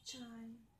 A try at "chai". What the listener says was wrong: Uốn lưỡi hơn một chút này. Cái lưỡi mình cong gập lên. Chơ, chơ. Uốn cong vào bên trong.